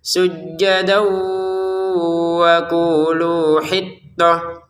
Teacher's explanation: Jadi ada dengungannya. Sujjadau di rongga hidung ya.